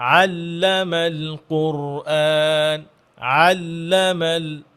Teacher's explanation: আইনটা একটু সুন্দর করে, এখানে যেন আল্লামাল হামজার মতো না চলে আসে।